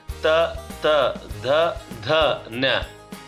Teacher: ನಾಲಿಗೆ ನಮ್ಮ ಮೇಲ್ಭಾಗದಲ್ಲಿ ಇರತಕ್ಕಂತಹ ಹಲ್ಲನ್ನ ಪ್ರೆಸ್ ಅಂದ್ರೆ ಅಲ್ಲಿ ಟಚ್ ಆಗುತ್ತೆ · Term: ದಂತ್ಯಾಕ್ಷರಗಳು